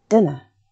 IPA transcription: dɪnə